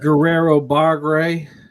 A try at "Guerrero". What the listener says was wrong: Guerrero. You got to roll them R's. Roll 'em.